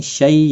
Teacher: یا لین ہے، تھوڑا نرمی کے ساتھ کھینچ کر ادا کریں گے